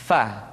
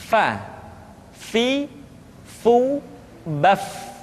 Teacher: Berikutnya pengucapan huruf fa. Diucapkan dengan menyentuhkan ujung dua gigi seri kita bagian atas dengan bibir bawah bagian dalam. Fa. Seperti kita mengucapkan huruf F di dalam huruf Latin.